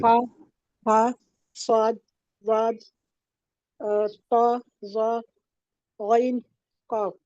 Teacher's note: हुरूफ मुस्तालिया कहते हैं और हमेशा पुर पढ़े जाएंगे